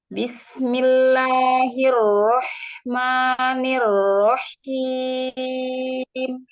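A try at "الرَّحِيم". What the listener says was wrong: Jangan ditasydid ya. Rahim.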